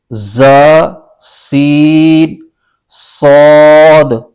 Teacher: इन तीन हुरूफ ज सी सद को अदा करते वक्त सीटी की तरह तेज आवाज निकलती है